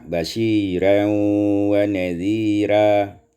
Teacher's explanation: Tarqiqur ra' fihi ma, ditipiskan ra' pada keduanya